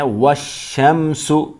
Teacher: والشمس واو کو ملائیں گے شین کے ساتھ، یہ الف اور یہ لام نہیں پڑھیں گے